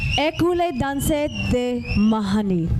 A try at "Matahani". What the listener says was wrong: you gotta pronounce the T.